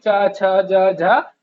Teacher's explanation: च बोले जाते हैं तालू से तालव्य जिसको बोलते हैं